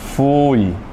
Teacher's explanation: É ditongo decrescente oral.